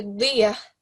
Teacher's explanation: Now this is a dod, and you give it a thick dal sound, so Diyah. Say it.